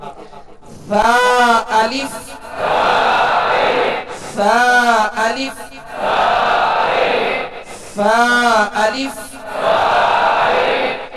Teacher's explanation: ان میں سختی نہیں ہوتی، سیٹی کی آواز نہیں ہوتی، اور ان کا مخرج ہے سرا زبان اوپر کے دو دانتوں کا اندرونی کنارہ